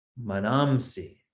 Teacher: Now you see there's this anuswara because of there's a sandhi there. Being followed by sakara, it becomes anuswara.